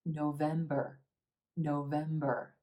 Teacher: Again, 3 syllables in this month, emphasis on the second syllable and the e as in red.